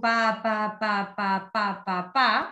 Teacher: estamos viendo a un bebote de 5 o 6 meses que está emitiendo una sílaba bilabial